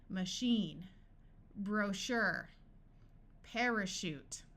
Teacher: in these words CH will sound like sh